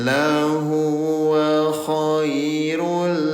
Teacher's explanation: Domahin bertemu dengan huruf lam terjadi hukum tajwid namanya idgham bila gunah. Ya, bunyi domatainnya yang asalnya bacanya khairun jadi nempel ke huruf lam ya. Khairun jadi kohairulli.